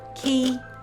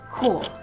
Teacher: Your tongue should be further forward for 'key' than 'core'